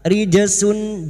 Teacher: Jim sukun yang mati asli di tengah kalimat Qalqalah sugro jangan lupa dipantulkan